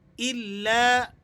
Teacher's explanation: لام پر تشدید ہے تو ہم اسے ذرا جماؤ کے ساتھ اور سختی کے ساتھ ادا کریں گے